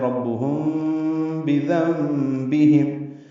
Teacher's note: اب یہاں پہ بذنبہم نون ساکن کے بعد با آنے کی وجہ سے اقلاب ہو رہا ہے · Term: اخفاء شفوی